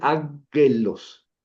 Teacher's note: cuando yo tengo una gama antes de una gutural, su sonido es como una ni.